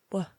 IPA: w